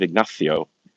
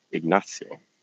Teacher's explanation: I like the sibilant instead of the th.